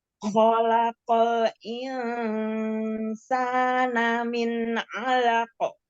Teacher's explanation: Kho adalah huruf tebal, huruf isti'la.